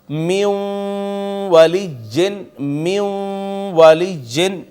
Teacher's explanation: यहां वाव पे भी जब इदगाम किया है तो गुना भी साथ हुआ है